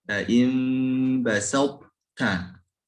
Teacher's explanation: Qalqalahnya emang melebur, tapi tebalnya tidak boleh hilang. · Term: idghamnya tidak sempurna